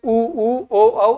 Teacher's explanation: आपकी जीभ पीछे चली जाती है। ये पश्च स्वर है।